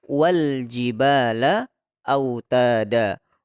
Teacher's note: ketika ada alif lam bertemu dengan huruf jim, tentu dibaca jelas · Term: alif lam qamariyah